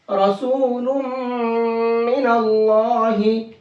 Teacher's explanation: इस तनवीन में जो नून की आवाज निकलती वो नून की नहीं, अब मीम की आवाज निकलेगी। तो इस तनवीन को मीम के अंदर मिक्स कर देंगे और गुन्ना करके पढ़ेंगे, रसूलुम मिनल्लाही।